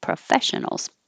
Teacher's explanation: Even though I'm coming down in pitch for professionals, I'm still going to put stress on the stressed syllable